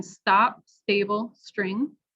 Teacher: A softer aspirated T in stop, stable, string.